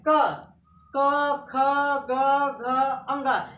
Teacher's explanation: ये हमारे कंठ से निकलते हैं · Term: क वर्ग